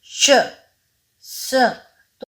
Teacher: इनके उच्चारण के समय अंदर से आती हुई हवा तालु, मसूड़े, दांत और जीभ से रगड़कर ऊष्मा यानी कि गर्मी पैदा करती हुई निकलती है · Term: संघर्षी व्यंजन